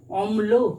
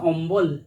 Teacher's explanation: মধ্য ব্যঞ্জন ধ্বনির আগম, অম্ল, অময়ল, হয়ে গেছে অম্বল, একটা ব ব্যঞ্জন ধ্বনির আগমন ঘটেছে